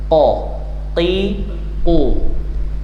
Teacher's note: keluar dari pangkal tenggorokan eh pangkal lidah paling belakang · Nah yang penting tidak boleh dia keluar napas. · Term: qof